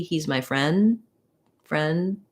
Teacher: i might not release the d i might be a stopped d